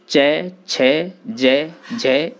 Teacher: तालु से बोले जाने वाले इन वर्णों को ताल्व कहा जाता है। इनके उच्चारण में जिह्वा मुख के ऊपरी चिकने भाग यानी तालु का स्पर्श करती है।